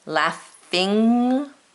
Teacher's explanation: Laughing has the nasal NG, where our tongue rolls back into our mouth.